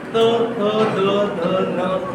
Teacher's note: त्याच्यानंतर येतात दात त थ द ध न, तिथे जीभ लागली